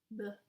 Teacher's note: The pronunciation of the B, it's with your two lips touching each other. B, it's bilabial.